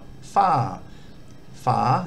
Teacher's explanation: just an F initial consonant followed by a long R, fa. Fa, this has got a falling tone.